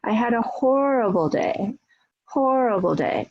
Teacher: you can see my voice goes up on horrible and it follows after that. So the hor is the coda or the peak syllable in the last important content word.